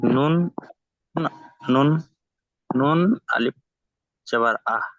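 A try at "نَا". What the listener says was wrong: নুন আলিফ জবর আ কি করে হয়?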